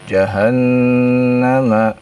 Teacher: Tasydid pada nun ya. Ditahan dua harakat ya.